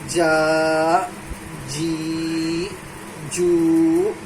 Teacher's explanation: بیچ زبان تالو سے مل کے جیم ادا ہوتا ہے